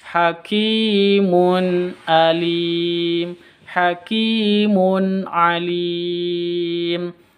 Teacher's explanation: tanwin bertemu dengan Ain bacaan izhar izhar jelas bacanya